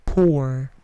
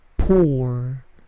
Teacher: Bunyi P plosifnya tidak terlalu besar, bukan pour, tetapi pour.